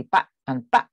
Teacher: And there's no vowel lengthening before voiced plosives. There's strong glottal reinforcement, so back and bag sound different for me, but in Hong Kong English they'll be back and back.